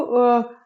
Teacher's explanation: इसके बाद देखते हैं छोटा ऊ स्वर को देखें अगर, तो छोटा ऊ की स्थिति जो है वह उच्चारण स्थान इसका देखा जाए तो ओष्ठ है, मात्रा इसकी ह्रस्व है